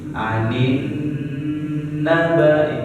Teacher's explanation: Nun bertasdid dan mim bertasdid. Itu gunnah. Itu ditahan gunnahnya selama 2 harakat ya Pak.